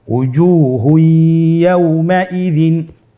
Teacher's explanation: এখানে আমাদেরকে যেটা করতে হবে তানবিনকে পরবর্তী হরফের সাথে মিলিয়ে গুন্নার সহিত পড়তে হবে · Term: ইদগামে বাগুন্না